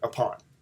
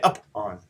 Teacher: You notice how the on is being hit harder.